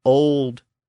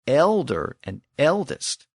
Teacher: The word old had the original back vowel, and elder and eldest had the mutated front vowel.